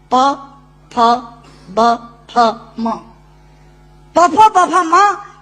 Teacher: प, फ, ब, फ, म दोनों होंठ मिलाकर बोले जा सकते हैं। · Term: ओष्ठांग